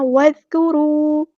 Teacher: ज़ाल यहाँ पे बारीक अदा करना है, इसको हिलाना नहीं है। वज़्कुरू नहीं पढ़ना, वज़्कुरू।